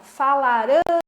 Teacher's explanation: A última sílaba é a tônica, então ela é oxítona